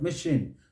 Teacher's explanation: stress is on the second syllable you must bring it out